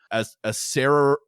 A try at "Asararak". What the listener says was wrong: Sorry, it's Asararak. That's right. So there's another R in there. Asararak.